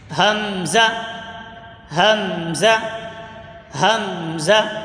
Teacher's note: حلق کے نیچے والے حصے سے ادا ہوتا ہے۔ جو مخرج ہا کا ہے وہی مخرج حمزہ کا بھی ہے، یعنی کہ حلق کے نیچے والے حصے سے حمزہ ادا ہوتا ہے اور ہا ادا ہوتا ہے۔ · जो मखर हा का है वही मखर हमजा का भी है यानी के हलक के नीचे वाले हिस्से से हमजा अदा होता है